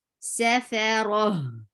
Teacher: Ra will be heavy and the sound will be short